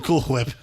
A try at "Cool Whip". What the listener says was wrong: are you putting so much emphasis on the H? Say cool. Say whip. Now say Cool Whip. That's how you say it.